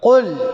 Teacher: உச்சரிச்சேனா மெல்லினமா உச்சரிச்சேனா வல்லினமா பாருங்க ஹுரூபுல் இஸ்திவுடைய எழுத்து வல்லினமான எழுத்து வந்திருக்குது ஹுரூபல் இஸ்தில்லா உடைய எழுத்து இந்த காஃப் வல்லினமான எழுத்து அப்ப ஹுரூபுல் இஸ்தில்லாவுடைய எழுத்து இந்த காஃப் வந்ததால நான் வல்லினமாக குல் குல்